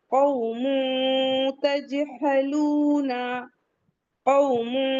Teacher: اگر ہم قومن کہہ دیں گے تو پھر ہماری ٹنگ مخرج میں ٹچ ہو جائے گی، نون کا مخرج جہاں ہے وہاں چلی جا رہی ہے. تو ہمیں اپنی ٹنگ کو اوپر تالو میں ٹچ نہیں کرنا ہے، قومن نہیں پڑھنا ہے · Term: اخفا